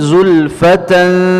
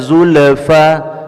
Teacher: sukunkan hamzah, tidak dipantulkan, tidak zulfa.